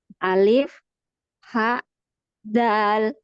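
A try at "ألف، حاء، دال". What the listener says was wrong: Dal. Dalnya jangan panjang ya. Dal. Bukan dal. Tapi dal. Alif, ha, dal.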